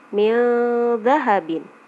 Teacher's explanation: nun mati bertemu dengan dha, nun matinya jadi harus dibaca samar-samar